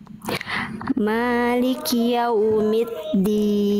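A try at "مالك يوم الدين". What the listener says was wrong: Oke, kuatkan huruf dalnya. Maliki yaumid.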